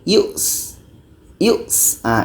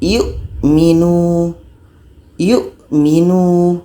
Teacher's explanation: dalam Hamzah ini sifatnya adalah syiddah tertahan